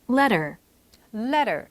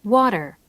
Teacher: 모음과 모음 사이에 T가 약간 L이나 R 그 한 중간 정도 소리처럼 letter 약간 이렇게 발음이 됐죠. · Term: American English